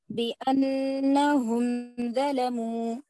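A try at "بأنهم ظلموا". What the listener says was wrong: یہاں پہ اظہار نہیں ہو رہا نا برابر بأنہم ظلموا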